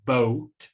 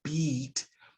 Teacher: the E uh think about what's going on with your lips when you say boat and how it's very very round versus beat which pulls the corners of your mouth way back